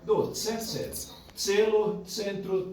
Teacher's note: o C é sempre com esse som, TS, tse